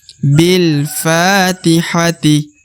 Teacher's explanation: harus panjang dua harakat untuk huruf Fa